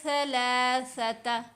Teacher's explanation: زبان دانتوں کے بیچ میں آئے گی، جو اوپر والے دانت ہیں اور نیچے والے دانت ہیں وہ جڑیں گے نہیں، زبان بیچ میں رہے گی۔ تھوڑی سی زبان باہر منہ سے نظر آئے گی تو یہ آواز بہتر پیدا ہوگی سا کی۔